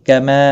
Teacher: باقی کسی بھی حرکت والے حرف کو کھینچنا نہیں۔ کما ما الف مدہ ہے، 1 الف کے برابر کھینچ کر پڑھیں گے